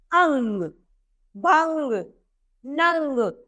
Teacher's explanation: अयोग वाहो की मात्राएं भी होती है अनुस्वार यानी एक बिंदु परली मात्रा जिसके उच्चारण के लिए हमें कंठ की आवश्यकता होती है